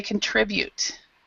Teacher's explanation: So this syllable tri is the actual stress.